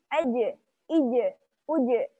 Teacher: Suaranya bersih dari udara tambahan. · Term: huruf jim